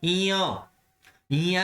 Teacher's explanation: इया बोलने से पता लगता है नाक की सहायता ली जा रही है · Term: नासिका